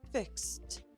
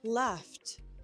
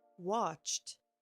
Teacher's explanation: Fix ends in an s voiceless sound. So fix becomes fixed.